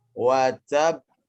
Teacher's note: Tapi lebih mudah diingat ini adalah qalqalah yang paling besar. Ya, yakni qalqalah akbar dengan bacaan yang lebih tertahan